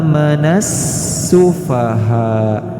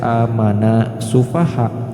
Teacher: kepada huruf Sin ah Menes sufaha jadi jangan dibaca amanah sufaha harus dileburkan Nun disertai dengan huruf Sin yang bertasydid